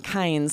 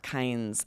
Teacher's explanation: We're saying kinds, and it's affecting the vowel a little bit, but we're keeping our tongue in the back of our mouth, and we're sort of emphasizing the N more